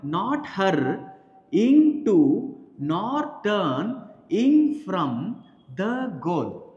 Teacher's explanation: 10 syllables accented on every second syllable